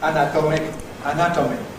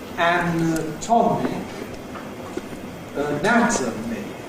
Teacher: the stressed vowels have a strong quality, /æ/, /ɒ/, /ˌænəˈtɒmɪk/, and the unstressed vowels typically have an /ə/, schwa quality